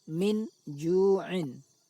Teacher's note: Cara membacanya, bunyi nun sukun dibaca samar antara bunyi izhar dan idgham. Antara cara membaca izhar dan cara membaca idgham, lalu didengungkan. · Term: ikhfa